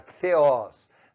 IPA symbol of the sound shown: θ